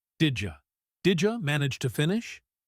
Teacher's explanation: So, did you becomes didja.